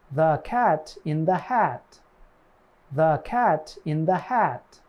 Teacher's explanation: Second, your tongue is relaxed and flat on the floor of your mouth, like a lazy person on a couch. Of all the front vowels we have explored in this series, ah has the lowest tongue position. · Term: ah sound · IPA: /æ/